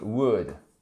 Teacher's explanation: on ne prononce pas le L.